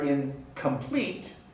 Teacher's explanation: the k sound is velar so the nasal is also pronounced velar